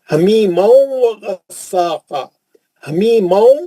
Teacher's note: تنوین کا ادغام مع الغنہ حرف واو